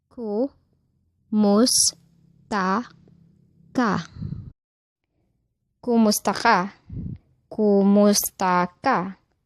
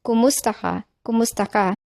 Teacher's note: The stress is on the second to the last syllable of the word kumusta, which is mus.